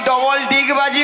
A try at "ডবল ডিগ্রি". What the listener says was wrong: ডবল ডিগবাজি নয়, বলো ডবল ডিগ্রি আছে। ডিগ্রিকে বলে ডিগবাজি। একটা কথা উচ্চারণ হচ্ছে না।